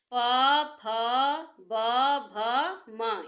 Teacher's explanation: इनका उच्चारण स्थान ओष्ठ है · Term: प वर्ग